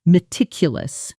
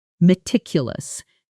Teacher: The stress falls on the second syllable.